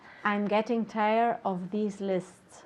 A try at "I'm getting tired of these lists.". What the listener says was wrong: Perfect, good.